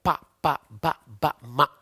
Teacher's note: ಇನ್ನೊಂದು ಪ ವರ್ಗ, ಪ ಪ ಬ ಬ ಮ, ತುಟಿಯ ಸಹಾಯದಿಂದ ಹುಟ್ಟುತ್ತವೆ ಅಕ್ಷರಗಳು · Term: ಓಷ್ಟ್ಯಾಕ್ಷರಗಳು